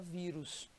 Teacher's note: a penúltima sílaba é aquela que recebe mais intensidade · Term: paroxítona